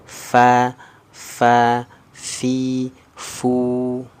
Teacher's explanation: Lidahnya turun. Nah, tidak ada nih pangkal lidahnya naik ke atas. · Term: istifal